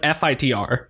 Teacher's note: it doesn't have a vowel before the R